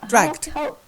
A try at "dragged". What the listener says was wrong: Now, it's not t, it's the d.